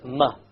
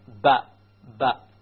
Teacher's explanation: The difference between the meme and the ba is that the meme uses the outer or the dry part of the lips and not the inner part like the ba.